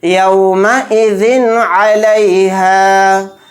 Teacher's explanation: عین اظہار کے حروف میں سے ایک حرف ہے، تو یہاں پر بھی اظہار کا قاعدہ ہوگا. یعنی ذال 2 زیر ذن کو جلدی پڑھنا ہے ظاہر کر کے بلا غنہ کے